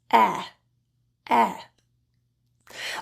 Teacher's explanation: the jaw is only slightly open the middle and the back of the tongue is in a neutral more forward position and your lips are only slightly spread